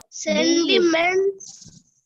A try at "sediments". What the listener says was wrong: These sediments. Not sentiments. N illalla kanna. No, there is no N, right? Sendi. Abhi solrukku N illalla. Sediments.